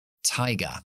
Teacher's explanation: cuando la pronunciamos fonéticamente es sin voz oclusiva y con mucho aire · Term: la t verdadera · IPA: /ˈtaɪgə/